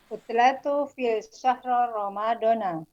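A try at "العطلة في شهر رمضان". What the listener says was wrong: Al-utlatu fi syahri Ramadan. Cukup disukunkan aja akhirnya.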